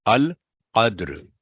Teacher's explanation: اور بعض دفعہ جو غلطی ہوتی ہے القدر، یعنی دال پر سکون کی علامت کو فتح کے ساتھ چھوٹا سا پڑا جاتا ہے، تو یہ بڑی احتیاط کے ساتھ پڑھا جاتا ہے۔ دال پر سے آواز سلپ ہوگی، پہلے کلکلا ہوگی، ساتھ ہی را پڑ جائے گی